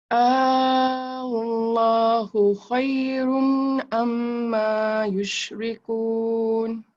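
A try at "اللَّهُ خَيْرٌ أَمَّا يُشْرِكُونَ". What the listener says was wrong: Masih dengar macam dengung. Masih dengar macam dengung. Saya try baca, awak dengar dulu. Allahu khairun amma yushrikun. Khairun amma. Dia, ingat mim dia dulu. Dengung sikit. Baru ma.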